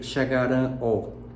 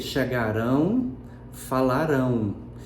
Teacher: Então, eu não vou dizer chegarão ó, não vou dizer falarão ó, eu vou dizer chegarão, falarão. Então, perceba sonoramente que esse ó fica dito, fica com a sonoridade de U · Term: glide